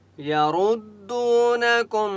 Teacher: را کو پر پڑھیں گے مستعلی کی وجہ سے۔ دو واو مدہ ہے، دال کو 1 الف کی مقدار کھینچ کر پڑھیں گے۔